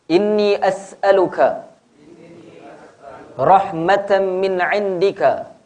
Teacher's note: Idgham ma'al gunnah, yakni dengung. Idgham ma'al gunnah, tanwin bertemu mim, maka ditasydidkan di situ.